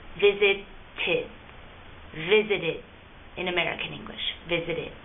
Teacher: Since it ends in a T, you're going to make the last sound id.